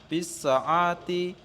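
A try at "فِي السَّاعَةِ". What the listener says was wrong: Fis sa'ati. Fis sa'ati. Ainnya ndak dipanjangkan.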